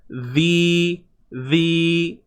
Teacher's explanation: Huruf zal, keluarkan sedikit hujung lidah di antara gigi atas dan bawah.